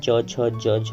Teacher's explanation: चौ वर्ग में च छ ज झ आता है, तो इसका भी आपको उच्चारण स्थान तालु हो जाएगा।